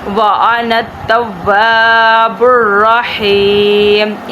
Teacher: واو کے آگے خالی الف ہے، اس لیے واو کو ہم نے لمبا کرنا ہے